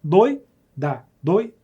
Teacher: separa as vogais no ditongo você faz o quê você junta são duas vogais juntas na mesma sílaba na mesma emissão de sons · essas vogais, elas não são como hiato, elas não estão separadas, elas estão juntas.